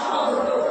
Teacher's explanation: ওপর দিকে জিভটা উঠে উচ্চারণ হয় বলে সেটা হচ্ছে তালব্য স